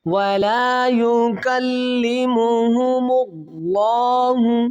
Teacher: اللہ کے لام کو موٹا پڑھیں گے